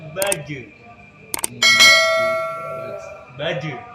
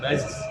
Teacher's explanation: Kalau jim tengah lidah. Menyentuh langit-langit. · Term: huruf jim